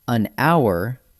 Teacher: Use an before a vowel sound, including silent letters. An hour, because the H is silent, so it starts with an ow sound